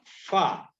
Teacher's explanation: ujung dua gigi seri atas bertemu bibir bawah bagian dalam